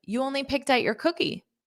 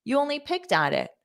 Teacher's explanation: it's a statement turning into a question by using our intonation